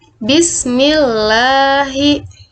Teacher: tarqiq ada dua dalam terdapat dalam dua keadaan yang pertama Hai lam yang terdapat pada lafal jalalah lafadz Allah dan didahului oleh huruf yang berharakat kasrah ya posisi mulut tidak menjorok ke depan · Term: lam tarqiq